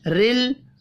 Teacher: غیر، غین کو اوپر پڑھیں گے، غی یا لین ہے. رل، را کو زیر کی وجہ سے باریک پڑھنا ہے، لام ساکن پر قلقلہ نہیں کریں گے.